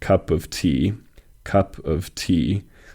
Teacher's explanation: the word tea receives the emphasis